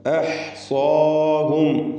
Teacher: അഹ്സാഹും സ്വാദിനും അതിൻ്റെ അലിഫിനും തഫ്ഖീമാണ് കൊടുക്കേണ്ടത്. ഇസ്തിഅലാഇൻ്റെ ഹർഫാണ്, അതിനെ ദീർഘിപ്പിക്കുന്ന അലിഫിലും തഫ്ഖീം ഉണ്ടാവണം.